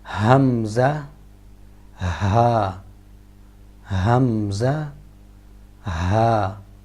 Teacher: حمزہ اور ہا یہ گلے کے آخر سے جو سینے کی طرف ہے ادا ہوتے ہیں